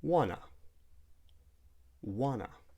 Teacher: instead of saying want to, we might delete the T and say wanna